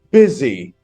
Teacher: The stress is on the first syllable. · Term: stressed syllable